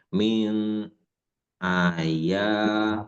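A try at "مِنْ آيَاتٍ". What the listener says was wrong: Apa ini? A. A. A-nya panjang, Pak.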